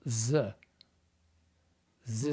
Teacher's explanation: if it's a voiced th, like the, they will go z.